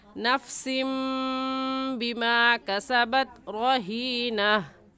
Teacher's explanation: छोटा सा मीम लगा देंगे और उस तनवीन को उस मीम के साथ मिलाकर पढ़ेंगे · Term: इक़लाब